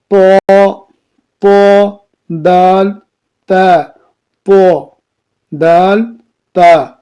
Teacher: کیا؟ زبان کی نوک اور اوپر کے دانتوں کے جڑ سے ادا ہوتی ہے. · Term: حروف نطقیہ